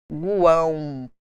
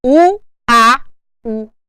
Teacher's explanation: O som aqui, nós nasalizamos para um U. Existe aqui um tio para representar foneticamente falando a minha nasalização. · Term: tritongo nasal